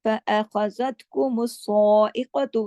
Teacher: सॉ को मोटा भी और 2 हरकत खींचना भी है, क्योंकि इसके ऊपर खड़ी ज़बर है। साइक़तु, क़ाफ मोटा पढ़ा जाएगा।